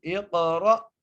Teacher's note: را کو موٹا کر کے پڑھیں گے اور حمزہ کو جھٹکا دے کر. اقرأ، را کو جب ہم جھٹکا دیں گے تو حمزہ ادا ہو جائے گا